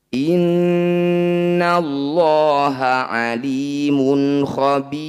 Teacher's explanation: Mad tabi'i bertemu huruf hidup kemudian dihentikan disebut bacaan mad arid bis sukun. Cara bacanya bi panjangkan 6 harokat, huruf terakhir sukunkan.